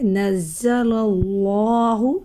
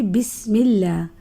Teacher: اللہ کے لام سے پہلے جب زبر اور پیش ہوتی ہے تو اس کو ہم موٹا پڑھتے ہیں